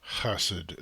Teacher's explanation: hassid is lower in the throat.